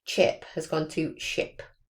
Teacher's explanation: But if an affricate, which as we can remember is a combination of a plosive and a fricative, so ch is a combination of a t plus a sh sound. If the child produces that as a fricative, that's called deaffrication. So it takes off that plosive at the start. So for that example here, I've said chip has gone to ship.